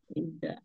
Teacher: जुबान की नोक और ऊपर के 2 दांतों के किनारे से जाल अदा होता है। जाल, बहुत नरमी से अदा करते हैं जाल को।